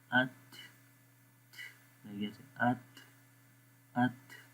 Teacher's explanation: تو یہ کیونکہ اس لیٹر کے اندر، اس حرف کے اندر یہ کوالٹی پائی جاتی ہے، یہ اس کی صفت ہے کہ جب یہ تا ہم پڑھتے ہیں تو وہاں پر ہوا تھوڑی سی جاری رہتی ہے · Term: ہوا کا جاری رہنا